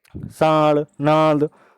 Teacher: मुंह से भी हवा निकल रही है और नाक से भी निकल रही है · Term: अनुनासिक